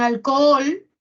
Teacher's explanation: Las dos OS se separan porque son dos vocales abiertas. Son iguales, pero igual se separan. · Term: hiato simple